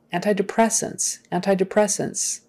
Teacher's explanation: another long word where the stress is on the second to the last syllable